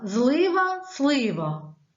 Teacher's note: в словах Злива слива всі приголосні тверді